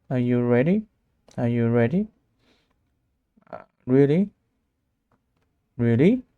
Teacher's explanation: Your voice goes up at the end. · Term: rise intonation